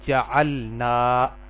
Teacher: جعلنا، اب دیکھیں یہ لمبا حرف تھا، نون کو ہم نے ایک الف کے برابر لمبا کیا اصل میں